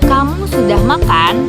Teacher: Tanda tanya membuat intonasi suara naik di akhir kalimat. Dan tanda tanya ini juga membuat kalimat tersebut menjadi kalimat pertanyaan.